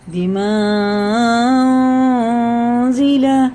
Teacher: مد منفصل ہے تو یہ 3 الف کے برابر کھینچ کے پڑھنا ہے. ٹھیک ہے نا، حمزہ آئے تو 4 کے برابر، الف آئے تو 3 کے برابر کھینچ کے پڑھنا ہے.